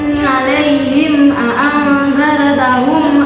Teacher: Nah, di situ terdapat huruf mim sukun bertemu dengan huruf hamzah atau alif. Cara membacanya terang di bibir dengan mulut tertutup. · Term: idhar safawi